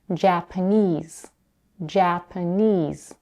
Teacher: In the word Japanese, the last syllable, knees, has the primary stress. The first syllable, ja, has the secondary stress, and the second syllable, p, is unstressed.